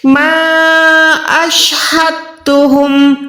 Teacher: تو تا جو ہے ڈائریکٹ پیچھے والی ہا سے ملے گی، نہ کہ دال ساکن سے، تو یہاں پر دال ساکن کا کام کم ہو جائے گا، ہا اور تا کو ہم نے ادا کرنا ہے۔